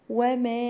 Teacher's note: وما، هنا مد جائز منفصل 4 حركات برضو او 5. وما ادراك، الدال هنا مقلقلة عشان ساكنة والراء هتبقى مفخمة.